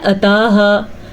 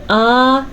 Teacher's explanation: आताहा, अक्सर लोग इसको पढ़ते हैं अताहा या पढ़ते हैं आताहा, दोनों सूरतों में गलत है। हमजा खड़ी ज़बर आ, इसे भी हम लंबा करेंगे